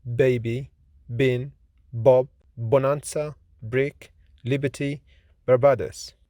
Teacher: B is voiced, lenis, bilabial, plosive consonant